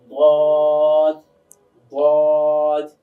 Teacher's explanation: তো আমরা এইভাবে বলি বদ বদ। আওয়াজটা কিন্তু আমার মুখের ভিতরে মোটা হচ্ছে।